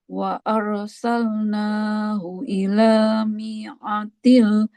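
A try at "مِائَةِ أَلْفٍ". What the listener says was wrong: Ila mi'ati. Nggak panjang dia. Minya nggak panjang. Mi'ati alfin. Nggak panjang.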